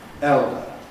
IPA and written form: ˈeldə (elder)